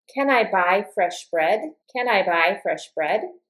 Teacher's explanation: Then the answer is yes or no. And my intonation for can I buy fresh bread is going to go up like this